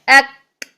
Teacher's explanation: آواز کو پہلے لاک کیا, بعد میں جب اس کو مخرج سے ہٹایا تو کیا ہوا کہ ہمس خود بخود جاری ہوگی. اسی طرح اک آواز کو پہلے مخرج میں سختی سے لاک کیا, پھر کیا ہوا کہ جب زبان کو ہٹایا تو اس میں ہمس جاری ہوگی, کیونکہ ہم نے اس کی بیس کیا بنانی ہے, ہم نے اس کی بیس بریتھ بیس بنانی ہے. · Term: نیچرل ہمس